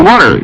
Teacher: I was using a D in the word water. Yeah, they say it's like a more stiff T.